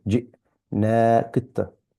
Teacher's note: Qalqala on the ta, and there's a stop on the hamza with sukoon